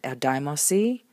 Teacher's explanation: not quite pronounceable this way, the nu drops out